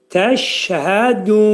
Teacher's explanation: Nunun üstündən fəthə atılacaq və nun izhar olacaq burunda.